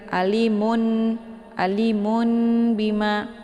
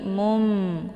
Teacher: ya Jadi bukan Alimun Alimun Bima ya tapi bunyi nun-nya itu tanwinnya atau nun-nya itu diganti kepada mim yang ringan ya ini ada bentuk mim kecil di sini ya Ali ya